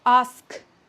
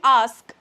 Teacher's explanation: We say K, ask. When I'm saying ask, there's sort of a breath there at the end. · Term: aspirated